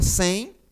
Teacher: Enquanto que o nasal, como eu disse, é um som fechado, certo? Um som que vai sair muito mais pelo nariz do que pela boca.